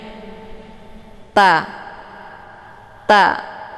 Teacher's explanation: permukaan sisi ujung lidah melekat ataupun menempel ke gigi seri bagian atas bagian ujungnya. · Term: huruf ta